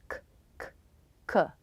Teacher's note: The K sound is made when the back part of the tongue comes up and touches the soft palate in the back.